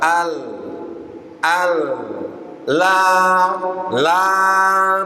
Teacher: aljahr yang pertama dia tidak keluar nafas ya nafas udara atau udaranya tertahan di pita suara al al la la tidak ada udara yang keluar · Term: sifat jahr